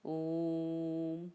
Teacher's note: ओम के ओकार का उच्चारण सर्वत्र प्लुत ही होता है